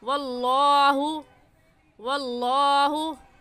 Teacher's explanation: اس لفظ اللہ کو پر یعنی موٹا کر کے پڑھیں گے، اور موٹا کرنے کا طریقہ کہ آپ کے دونوں ہونٹ گول ہو جائیں